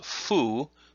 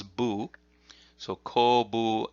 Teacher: the middle character is fu, but with the voicing it becomes bu. So kobu and then shi at the end.